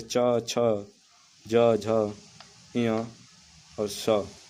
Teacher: तालव्य व्यंजन। जिन व्यंजनों के उच्चारण में जिह्वा का अग्रभाग को कठोर और तालु को स्पर्श करता है, तालव्य व्यंजन कहलाता है।